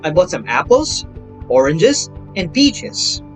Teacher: A list, now for enumeration class, is a number of tone groups with short rising intonation pattern indicating that the discourse continues